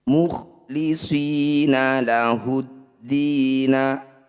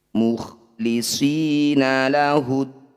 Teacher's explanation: Mad tabi'i bertemu huruf hidup kemudian dihentikan disebut bacaan mad arid lis sukun. Cara bacanya dipanjangkan 6 harokat, huruf terakhir sukunkan. Jadi awalnya mukhlisina lahuddina, ketika dibaca berhenti mukhlisina lahuddin.